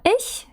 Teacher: Воно складається з короткого и та м'якого х, так званого.